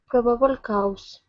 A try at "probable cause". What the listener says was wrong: Okay. Right now you're saying cow. Instead of cow, it's cause.